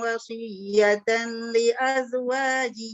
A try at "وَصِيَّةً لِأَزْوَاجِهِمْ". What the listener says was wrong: Wasiyatal. Lam tu jelaskan sikit lagi.